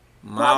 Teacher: O L também tem o som de U.